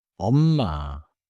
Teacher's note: Korean calling intonation is not only volume. It is a clear rise with a small hold at the end.